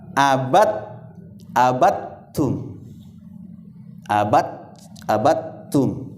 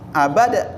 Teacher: maka langsung aja dilebur ke huruf yang kedua, sehingga qalqalahnya sudah tidak dibaca. Ya, qalqalahnya tidak dibaca, walaupun memang sesungguhnya itu qalqalah, iya. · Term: idgham mutaqaribain